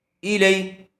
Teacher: یا ساکن سے پہلے زبر آیا ہوا ہے اس لیے لین کا قاعدہ ہوگا، اس کو جلدی اور نرم آواز سے ادا کریں گے۔ ای لئی، کاف زبر کا، کاف کے اوپر زبر ہے جلدی پڑھیں گے، اس کو چھوٹا کاف کہتے ہیں۔